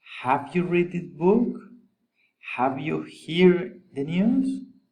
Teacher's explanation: General question, rising intonation.